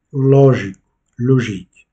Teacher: Et ici, à nouveau, on accentue la syllabe lo